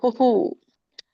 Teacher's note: ಹೂ ಕೆ ಉ ಸ್ವರ ಕೂಡಿರೋದ್ರಿಂದ ವಿಸರ್ಗ ಕೂಡ ಉ ಸ್ವರ ಇಂದಾನೆ ಎಂಡ್ ಮಾಡಬೇಕು